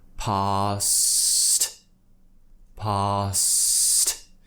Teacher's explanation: But essentially what we're doing is we're creating the S sound, then we need to cut it off with the T sound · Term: consonant cluster